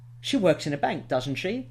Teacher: With a rising intonation, and that will make you sound a bit more polite and a bit more uncertain, which will give the other person the opportunity to disagree or to give you their own opinion.